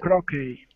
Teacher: you do not pronounce the T